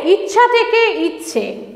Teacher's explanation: আকার ছিল এই আকারটাকে কি করেছে নিজের মতন করে একারে রূপান্তরিত করেছে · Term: প্রগত স্বরসঙ্গতি